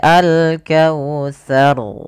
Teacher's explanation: takrir yaitu pengulangan di dalam huruf ro tapi di sini Hanya Sekali saja